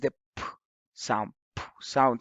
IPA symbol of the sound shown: p